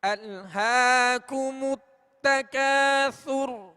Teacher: ہم نے ہا کو کھینچا اس لیے کہ یہ کھڑا زبر ہے, اور کھڑا زبر الف مدہ کے قائم مقام ہے, لہذا ایک الف یعنی 2 حرکت کے برابر اسے کھینچ کر ادا کریں گے.